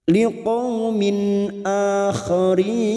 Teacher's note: kasr tanwin bertemu Hamzah Idhar halq dibaca jelas tanpa mendengung